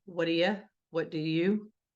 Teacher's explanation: In connected speech. So the word do a lot of times will sound like duh